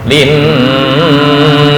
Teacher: Dengung di gunnah di nun ya.